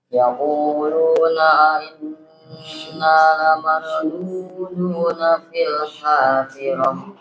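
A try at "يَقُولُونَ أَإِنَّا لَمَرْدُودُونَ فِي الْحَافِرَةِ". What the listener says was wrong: Ya, ada sedikit ya kurang tepat di sini. Huruf ro-nya kurang tebal. Hamzah itu nggak boleh diseret ya, nggak boleh diseret. Maksudnya nggak boleh dilunakkan. Tapi itu dia punya sifat kuat. Yaquluna inna lamarduduna fil hafirah. Yaquluna inna. Jadi jelas inna.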